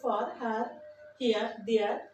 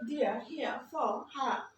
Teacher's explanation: British accent যারা শিখবে তারা এই ভাউলের পরে আরের উচ্চারণটা করবে না